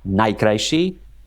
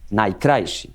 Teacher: For example, in Eastern Slovakia, it's interesting that they put the accent on the penultimate syllable